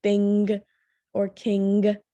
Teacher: or king when you say those thing you can see how your tongue is pressing up on the back part of your mouth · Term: velar consonants